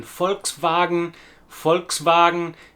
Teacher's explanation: In typical German fashion, the two words are merged together into a compound noun, Volkswagen. Pay particular attention to the long German A sound in Volkswagen